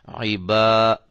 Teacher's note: اب یہ الف مدہ ہے، اس کو ایک الف کی مقدار کے برابر لمبا کریں گے